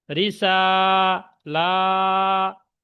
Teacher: আচ্ছা, তারপরে এসছে রিসালাতি, র জের রি, সিন খাড়া জবর সা, রিসা, লাম খাড়া জবর লা, দুটো সব টান হবে, সিন টান হবে, লামও টান হবে